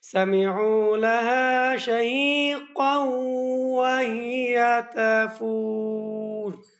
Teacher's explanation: কেন পুর হবে? রা ওয়াকফ অবস্থায় সাকিন, তাহার পূর্বে ওয়াও সাকিন এবং তাহার পূর্বে পেশ। এজন্য এই রাটাকে পুর করেই পড়তে হবে